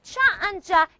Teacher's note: But instead of a rapid release, instead of that, instead of releasing the closure, what happens? The tongue moves to the position of a fricative. · It's like you have ta and sha together, and it looks like you have da and ja together. · So basically, affricates are what? A combination of a stop plus a fricative.